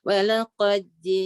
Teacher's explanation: Idgham di situ. Walaqad dal masukkan dalam jim.